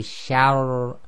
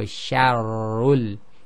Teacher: So note the sha is light and the ba is light, but the first one, the sha is light and the ra is heavy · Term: heavy ra